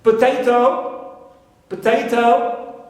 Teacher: we stress the second syllable and not the first one